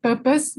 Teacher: Purpose should be just purpose without the R, because some people pronounce it as purpose.